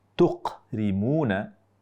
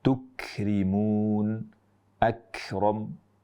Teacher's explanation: kaf ke depan dikit dan dorongan lidah kita lebih ke langit-langit bagian yang bertulang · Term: huruf kaf